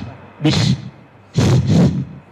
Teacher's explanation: Ada hamas. Ada angin. Ada udara yang terlepas.